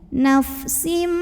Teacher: tanwin kasroh lebur ke mim. Nafsim M disertai dengung. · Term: idgham bi gunnah kamil